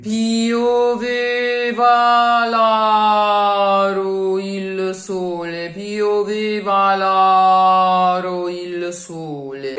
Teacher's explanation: in aro, the first one, the tonic one, is open, aurum aro, and the second one isn't because it's atonic